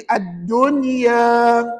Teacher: Dengung ke tak dengung bacaan? Tak dengung. Pasal nun mati